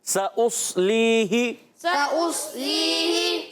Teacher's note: پہلے سین پھر صاد، سین باریک صاد موٹا